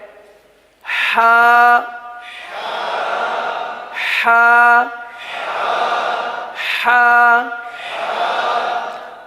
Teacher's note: इस हर्फ का मखर क्या है हलक का दरमियान वस्ते हल्क